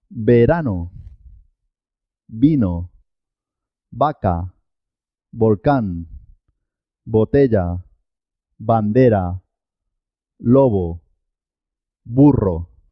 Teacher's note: la be y la uve suenan igual